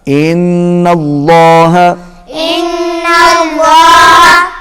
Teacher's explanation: اللہ کا لام پھر موٹا ہوگا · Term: لام موٹا